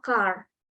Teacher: kalau American itu dia biasanya huruf R itu dia cenderung lebih jelas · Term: R-nya lebih jelas